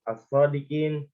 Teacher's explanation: Kayak sod, as-sodikin, kan langsung ke sodnya gitu, lamnya nggak dibaca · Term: alif lam syamsiah